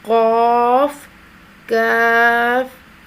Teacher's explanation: کاف، اس کو باریک آواز میں ادا کیا جائے گا، اس قاف کو موٹی آواز میں ادا کیا جائے گا۔ کاف، اس کا ان دونوں کا فرق ہونا چاہیے، یہ ہے قاف کاف، یہ فرق ہے ان میں۔